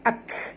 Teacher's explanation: kaf ini mati maka kita bunyikan hammas dia